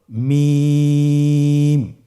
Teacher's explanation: মিম হরফটির উচ্চারণ স্থান দুই ঠোটের শুকন স্থান থেকে উচ্চারিত হয়